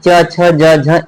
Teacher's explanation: च छ ज झ इया का भी उच्चारण स्थान तालु है